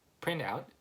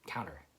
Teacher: you don't really pronounce the T